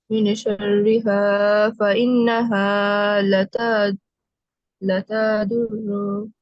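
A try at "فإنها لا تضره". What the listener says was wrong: লা টান আছে একটা লিফ, লা তাদুররুহু।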